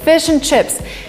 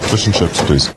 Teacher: the word and is in a weak form, and basically we only say n